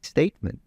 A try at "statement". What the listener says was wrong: Listen to that statement, but you can hear a dental T here. It's very close to what I would say is a native, just a little bit forward T.